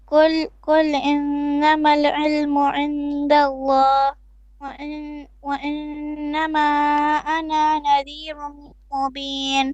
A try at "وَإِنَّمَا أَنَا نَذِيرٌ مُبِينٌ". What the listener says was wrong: أنا don't stretch it. Mud on the إنما 4 beats. You're not making your mud long enough. 4 beats.